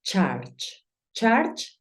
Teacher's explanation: Claro está que yo estoy haciendo el sonido de la u como una a · es como si dijeses una a pero terminas diciendo una o